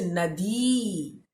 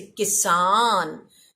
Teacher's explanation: जैसे दीर्घीकार है तो वहां पर आपको थोड़ा लंबा खींचकर बोलना है, जैसे नदी। लेकिन अगर रस्वीकार है, रस्व ईकार है, तो वहां पर थोड़ा जल्दी बोलना है